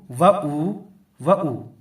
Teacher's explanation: حمزہ وا پیش او پڑھیں گے لیکن واو کو ہم یہاں نہیں کھینچیں گے